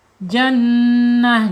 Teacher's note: Jadi taknya, tak marbutohnya menjadi ha ya, menjadi ha.